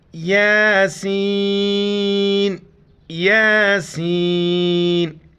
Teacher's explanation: یا کے اوپر کڑا زبر ہے، ایک الف کی مقدار کھینچیں گے، اور سین سیٹی والی الفاظ اس کے اوپر مد ہے، 4 الف کی مقدار کھینچیں گے۔